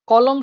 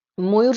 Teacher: কলম শব্দের ম টা দেখো পুরোটা উচ্চারণ হচ্ছে না আবার ময়ূর শব্দের ম টা পুরোটাই উচ্চারণ হচ্ছে